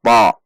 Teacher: Menaikkan pangkal lidah sesuai dengan sifat huruf ta